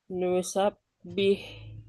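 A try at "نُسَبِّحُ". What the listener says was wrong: Nusab, nusab, ini baknya hilang sepenuhnya suaranya nih. ditahan ya, tahan dan tampakkan tuh, menahannya tuh ditampakkan. Nusabih.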